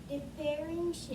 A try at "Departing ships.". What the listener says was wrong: Not depairing. Don't skip the letter.